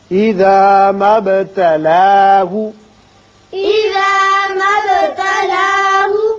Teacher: با ساکن ہے، اس کی صفت قلقلہ ادا کریں گے، مد نہیں پڑھیں گے